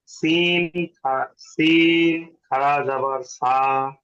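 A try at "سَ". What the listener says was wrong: আর একটু বেশি টানবেন। জবর সা, আর একটু বেশি টানবেন, সা।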